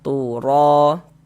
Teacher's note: Maka huruf ro dibaca tebal, dibaca tabkhim. Sehingga pangkal lidah kita naik terangkat ke atas ketika kita mengucapkannya. Tebalkan huruf ro-nya.